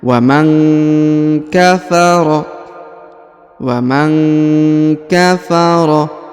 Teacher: Perhatikan huruf nun sukun bertemu dengan ka, maka didengungkan dan disamarkan